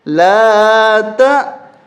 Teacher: یہ الف نہیں ہے، یہ حمزہ ہے، یہاں پر ہم جھٹکا دیں گے